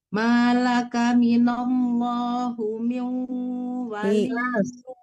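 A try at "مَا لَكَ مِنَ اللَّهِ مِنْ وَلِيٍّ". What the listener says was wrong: Ibu, bukan hu tapi hi, minallahi bukan hu ya. Bukan wali untuk wali. Wali, Bu.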